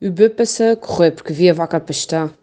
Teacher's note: uma característica muito típica do sotaque açoriano, que são as vogais mais fechadas. Muito fechadas mesmo.